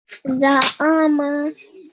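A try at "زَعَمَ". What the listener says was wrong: Excellent. Good. Well done.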